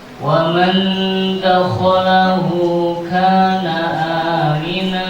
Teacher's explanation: Nun sukun bertemu dal. Dengung satu alif dinamakan bacaan ikhfa hakiki sebab nun sukun bertemu dal.